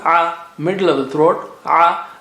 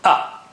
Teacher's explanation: Ayn has a sound, a, middle of the throat, a, whereas Hamza is from the bottom or the edge of the throat,